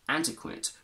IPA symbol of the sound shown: ə